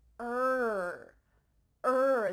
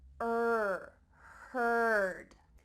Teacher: this is the colored r and it's really typical in american english er heard let's listen to that clip again and the same